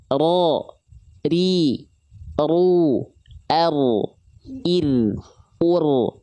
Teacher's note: Dia bergetar tapi bukan dengan karakter getaran yang berlebihan, tapi bergetar dengan tidak berlebihan.